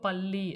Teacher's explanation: இல்லுலியும் உச்சரிக்கும் பொழுது நாக்கு வந்து மேல் அன்னத்தை தொடணும். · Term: பொது லகரம்